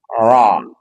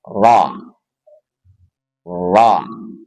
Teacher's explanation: Dan dia punya sifat takrir, getaran. Tetapi getarannya hanya sekali.